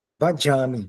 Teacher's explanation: O y é a consoante, é uma semivogal palatal. Quando ele fala y, quase que toca o palato